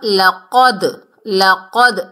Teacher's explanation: دال جو ہے کتب جدن میں سے ہے، یعنی قاف، طا، با، جیم، دال، جنہیں ہم حروف کلکلہ کہتے ہیں، ساکن حالت میں آ رہا ہے تو اس کی ڈبل ساؤنڈ آئے گی، یعنی یہ ہلا کر پڑھنا ہے۔ قاف حروف استعلا میں سے موٹا ادا ہوگا